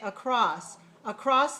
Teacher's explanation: cross has more power to it and the ah is longer